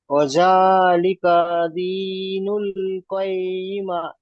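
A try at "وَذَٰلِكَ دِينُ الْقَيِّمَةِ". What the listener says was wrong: ওয়াজালিকা টান হয়ে গিয়েছে, কা টান হবে না। ওয়াজালিকা, ওয়াজালিকা।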